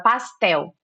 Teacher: a palavra pastel acaba com L, mas nós colocamos um som de U.